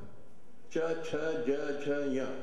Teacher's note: all the sounds coming from the middle of the tongue